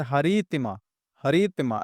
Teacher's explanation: हरि को थोड़ा ज्यादा खींचना है। तिमा को तुरंत बोलना है क्योंकि यहां पे हर्षिकार है।